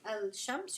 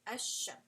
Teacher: You're going to just pronounce a and then straight to this sheen, right? You're not going to say al-shams, you're going to say ash-shams.